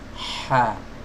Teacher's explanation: huruf H keluar dari tenggorokan bagian tengah. Amha, bukan dari tenggorokan bawah.